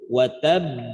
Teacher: Tahan dulu dengan sifat daripada ba memiliki sifat syiddah tertahan suaranya, watab baru pantulkan watab, nah gitu, watab, watab, watab. Jadi bukan langsung mantul watab, bukan, tapi nahan dulu watab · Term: qalqalah akbar